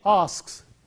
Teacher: When we say asks, it is s sound. He asks, because k is a voiceless sound, the s also is voiceless.